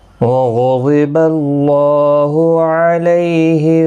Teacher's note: غین اور ضاد حروف مستعلیہ ہیں، پر پڑھے جائیں گے